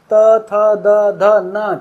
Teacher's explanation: पांचों में आपका जीभ आपके दांतों से लगेगी